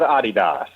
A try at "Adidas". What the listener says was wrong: Yeah, you don't pronounce the S.